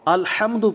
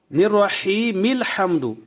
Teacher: لیکن اگر یہاں آپ وقف کر دیتے ہیں، کوئی بھی وقف ہو، یا قطعن کر دیتے ہیں یا سکوت کر دیتے ہیں، تو یہاں سے جب آپ ابتدا کریں گے تو اس وقت یہ حمزہ پڑھا جائے گا، الحمد پڑھ کر آپ آگے پڑھتے جائیں گے۔ تو ابتدا کی صورت میں حمزہ جو وصلی ہے وہ پڑھا جاتا ہے، وصل کی صورت میں وہ گر جاتا ہے۔